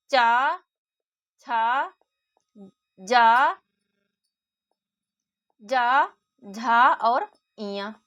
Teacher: तो तालु में आता है चा वर्ग